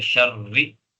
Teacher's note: را پر زیر آ رہی ہے، ٹھیک ہے، اور اس سے پہلے زبر آ رہا ہے، ٹھیک ہے، شرری، ٹھیک ہے، تو زیر کا اعتبار کر کے اس کو باریک پڑھا جائے گا